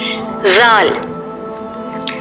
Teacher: جب زبان کی نوک ثنایا علیہ کے کنارے سے لگے تو زال ادا ہوتا ہے۔